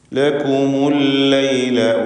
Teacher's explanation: ലക്കും എന്നതിലെ സാക്കിനത്തായ മീമിനെ ദമ്മ കൊടുത്തുകൊണ്ട് ഉച്ചരിക്കുന്നു. കാരണം ഇൽത്തിഖാഉ സാക്കിനൈൻ പരിഹരിക്കുവാൻ വേണ്ടിയാണ് അങ്ങനെ ചെയ്യുന്നത്.